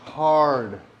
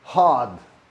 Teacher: In the UK, in British English, they'll say hard. So the R doesn't get pronounced.